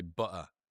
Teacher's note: There two t's in butter and they're not saying either of them. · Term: glottle stop